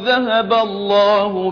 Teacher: الله تفخيم لفظ الجلالة لأنه ما قبله مفتوح